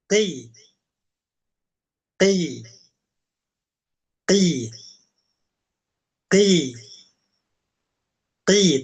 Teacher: Huruf qof ketika dia nisbi ya, dia pangkalnya ya tidak setinggi fathah dan dommah